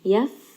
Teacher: Qawmiya, this is going to be idgham with ghunna. Yaf, fa here is going to have a little bit of hams. Allow some of that air to escape.